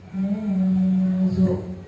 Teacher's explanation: Nun mati atau tanwinnya dibaca tebal. Lama bacanya 1 alif atau 2 harakat.